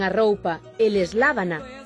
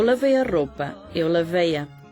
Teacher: cando tras un ditongo o galego nasaliza o pronome e o portugués non